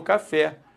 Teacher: quando você fala café a sílaba tônica é o fé e pare porque se não fosse o fé eu falaria Cafe